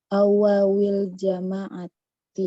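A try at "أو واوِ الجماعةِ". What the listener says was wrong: Kenapa tidak ditanwin jamaahnya?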